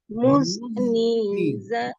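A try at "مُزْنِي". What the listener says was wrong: Muzni. Jangan ada e-nya. Coba. E-nya jangan ada tuh. Buang dulu e-nya. Gitu Bu. Gitu. Jangan biasakan muzni. Itu jangan, nggak boleh. Muzni.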